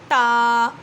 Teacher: زبان کی نوک سامنے والے 2 دانتوں کے سرے سے لگے، اس سے تا ادا ہوتا ہے